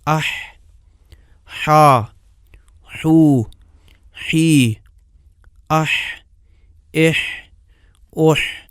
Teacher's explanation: حرف حا میں زبان کا وہ انتہائی حصہ جو غذا کو سانس والی نالی میں جانے سے روکتا ہے، تھوڑا سا پیچھے کو جاتا ہے۔ اس قدر پیچھے نہیں جاتا کہ جس مقدار میں عین کے لیے پیچھے جاتا ہے۔ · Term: حا کا مخرج